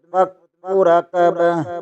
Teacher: یہاں کاف مشدد ہے، اسے دو بار پڑھیں گے